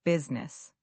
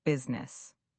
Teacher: Many learners say business with three syllables, but native speakers say business with just two syllables. The I sort of disappears.